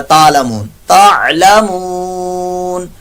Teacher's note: صرف تعلمون کہا تو یہ عین کو آپ نے ختم کر دیا تو یہ غلط ہو جائے گا